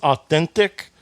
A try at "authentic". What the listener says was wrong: very, a lot of pronunciation going on tonight. I heard every letter in that word. Authentic.